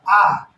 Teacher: ठीक, तो जिन वर्णों के उच्चारण में यानी मुख पूरा खुला रहे, आ का आप उच्चारण करेंगे तो देखेंगे पूरा मुख खुला रहेगा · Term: विवृत